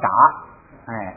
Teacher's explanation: 首先是卡变成了嘎，因为有前加字不送气了 ，然后变成嘎